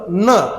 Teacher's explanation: त्यानंतरचा जो त थ द ध न हा जो न आहे याचा उच्चार आपली जीभ दातालाच लागली पाहिजे अशा पद्धतीने त्याचा उच्चार करायचा असतो. ही गोष्ट तुम्हाला फायद्याची असणार